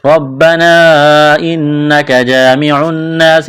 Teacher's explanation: نون مشدد پر غنہ کریں گے، آواز ناک میں چھپائیں گے